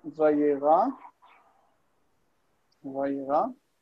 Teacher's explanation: Where we would expect there to be a nun infix there, because it's nifal, where there's a nun infix. It tries to assimilate into the resh as dagesh, but resh does not accept dagesh and it rejects it, and the e becomes a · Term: lengthening